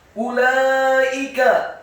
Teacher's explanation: lamnya dibaca fathah 4-6 harokat karena ada harokat bendera